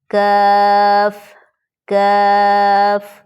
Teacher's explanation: اس کی اواز باریک ہوتی ہے نارمل ہونٹوں کو تھوڑا سا پھیلا کر